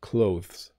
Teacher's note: if you are in Britain though if you are learning a British pronunciation you do hit the th a little bit